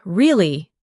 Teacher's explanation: For example, when you ask a question like, "Really?" your voice goes up slightly at the end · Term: intonation